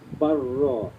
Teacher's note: lam dengan ra tu ada sabdu, kita akan buangkan lam tu, bal ra kan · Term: Mutaqaribain